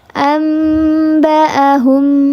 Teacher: Jadi dia samar-samar dengungnya tidak seluruhnya ke hidung. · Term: kamil